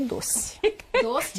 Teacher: Mas a maioria dos brasileiros acaba mesmo falando E como se fosse I.